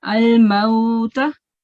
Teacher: here we have waw sakin, and the letter before that is has fatha on top, right? So then we have to prolong this vowel softly.